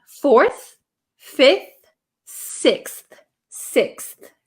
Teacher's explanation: no I wouldn't use an F sound here this should be a th sound